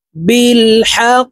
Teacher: কফকে ওয়াকফের ক্ষেত্রে সাকিন করে ফেলবো। তো কফকে যখন আমরা সাকিন করব, উপরের দিকে ধাবিত করে ধাক্কা দিয়ে উচ্চারণ করে সাকিন করব।